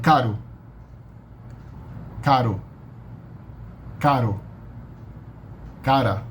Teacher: when the R is in the middle between vowels and is spelled only as a single standalone R, then it's pronounced like a single tap of the tongue. Like a tiny little tap, like daddy in English, like daddy or caddy or teddy or Betty.